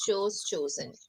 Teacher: But when you look at the past forms of it, so we don't make the oo sound, we make the o sound. So it's choose, chose, chosen.